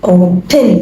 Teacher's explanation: ኦ አይደለ? ስለዚህ ኦ የሆነ ድምጼ open ሳይሆን ምላት open so ትን የምትለዋ ድምጽ ላይ ትንሽ ቀዝቀዝ ላለሁኝ ኦ የምትለዋ ላይ ትንሽ ጮክላለሁኝ ወይም ስትረስ አረጋታለሁ።